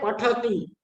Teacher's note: પનું સ્થાન એ પણ ઓષ્ટ્ય છે. ઠનું સ્થાન છે એ મૂર્ધન્ય છે, એટલે કે મૂર્ધા છે. અને તનું સ્થાન એ દંત્ય છે, એટલે કે ઓષ્ટ્ય, દંત્ય અને મૂર્ધન્ય.